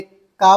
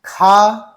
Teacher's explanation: हमने का बोला तो कम वायु मुख से निकली, खा तो खा ज्यादा निकल रही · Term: महाप्राण